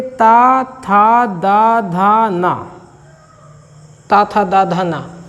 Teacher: ता वर्ग में देखिए ता, था, दा, धा, ना, ता, था, दा, धा, ना। ऊपरी दांतों के निकट से इसका उच्चारण स्थान